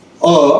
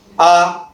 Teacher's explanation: लवकर म्हणतो मी. आणि जेव्हा मला आ असं म्हणायचं आहे, थोडा भर देतो मी त्याच्यावरती. आ थोडा लांब चालला माझा. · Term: दीर्घ